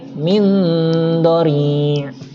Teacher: Dengungnya nggak terlalu lama, hanya 3 harokat. Itu tentang ikhfa hakiki.